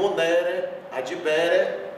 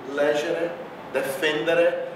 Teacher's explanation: a sílaba tônica está antes do E. Então, o era é átono. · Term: E átono